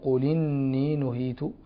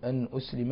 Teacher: أنسلم نقل حركة الهمز لورش هنا أنسلم ونحقق الهمز لقالون